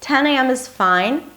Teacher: notice that high pitch at the beginning